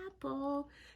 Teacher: short a has that big open mouth